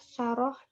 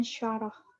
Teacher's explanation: Perbedaannya ialah pada bunyi pertama, yaitu saroh menggunakan sin dan syaroh menggunakan shin.